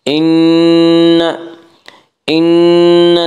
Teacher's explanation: इन नून मुशद्दद गुन्ना होगा, गुन्ना की मकदार एक अलिफ है।